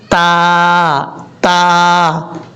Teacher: تا اس کا مخرج ہے زبان کی نوک اوپر والے دانتوں کی جڑوں سے لگے تو تا پڑھا جاتا ہے